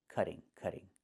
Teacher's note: Not cutting, but cutting. And in America, we change the T to a fast D when it's between vowels